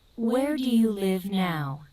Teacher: se empieza con el question word en la entonación arriba. Where do you live now? Y va bajando.